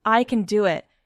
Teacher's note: If you want to sound sure of yourself, stressing the right words can change everything. Yes, even a simple sentence like, I can do it, becomes stronger if you stress can. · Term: emphasis